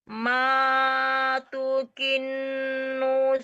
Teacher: Matukin dengung tasdid dan berdengung nun tasdid, ditekan dan ditahan.